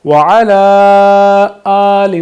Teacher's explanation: ہم یہاں پہ اپنی آواز کو 3-4 الف کی مقدار کے مطابق لمبا کریں گے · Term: مد